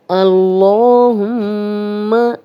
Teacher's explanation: یہاں پہ لام سے پیچھے زبر آ گئی ہے تو اس لام کو ہم موٹا پڑھیں گے، کھڑا زبر ہے، 2 حرکات لمبا کریں گے، اور میم پہ شد ہے تو ہم یہاں پہ غنہ بھی کریں گے